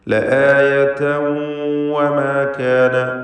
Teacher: തൻവീനിനെ വാവിൽ ലയിപ്പിച്ച് ഇദ്ഗാം ബിഗുന്ന ചെയ്ത് മണിച്ചുകൊണ്ട് ഉച്ചരിക്കുക